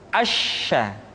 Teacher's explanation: Sya dikeluarkan dengan cara mengangkat tengah lidah kita ke langit-langit. Asya. Dan sifat yang dimiliki oleh huruf sya yang paling nampak adalah apa yang disebut dengan sifat at-tafashi, yaitu menyebarnya angin di dalam mulut kita.